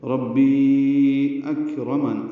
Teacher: ربی میں راپور ہے اور بی یا مدہ ہے اور اس کے بعد حمزہ آنے کی وجہ سے مد منفصل ہے